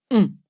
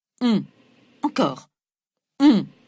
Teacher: Il se passe quelque chose dans le fond de la bouche. La langue se recule et le voile du palais, le vélum, s'abaisse, ce qui fait passer une partie de l'air par le nez, tandis que le reste continue de passer par la bouche. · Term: voyelle nasale